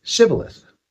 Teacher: Apparently the people of Ephraim spoke a slightly different dialect and they couldn't say the sh sound